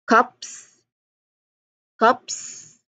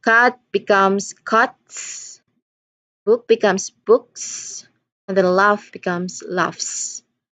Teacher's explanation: you pronounce it as a soft hissing like s